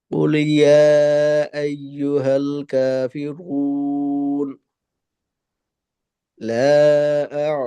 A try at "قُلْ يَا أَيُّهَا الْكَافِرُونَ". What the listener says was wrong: যেটা খেয়াল করা দরকার, এখানে জি এখানে কুল ইয়া এভাবে বলে গেলে লামের উচ্চারণটা পূর্ণতা পায় না, লামের উচ্চারণ অপূর্ণাঙ্গ থাকে। সেক্ষেত্রে কুল ইয়া,